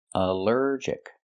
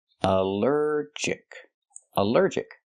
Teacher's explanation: Allergic is three syllables. Allergic. The stress is on the second syllable.